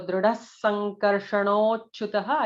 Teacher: Drudas and Drudha is a second Dha, it is not regular Da. Drudas, so there will be an extra sibilant because the next nama starts with Sankarshana S